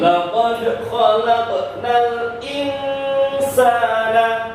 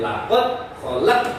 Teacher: ada huruf qalqalah, dal sukun dan qaf sukun, harus dibaca memantul